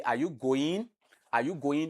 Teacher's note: rising intonation because I raise my voice when I end the sentence